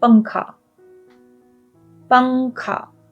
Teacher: The N sound is very faint nasal sound.